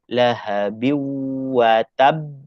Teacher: jadi lahabiatab itu idgham maal hunna so kita baca kena masuk kepada wau